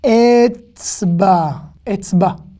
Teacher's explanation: Le A, il est rallongé ici.